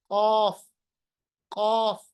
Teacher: कौफ कैसे पढ़ेंगे, जुबान की जड़ या अक्सल लिसान को सीधे तौर पे जो उसका तालू है ऊपर की तरफ, जिसको हम इंग्लिश में हार्ड प्लेट भी कहते हैं, उसके साथ जो ही आप इसको मिलाएंगे तो कौफ जो है ये खुद ब खुद अदा हो रहा है। ठीक है, it is pronounce from the root of the tongue and the soft प्लेट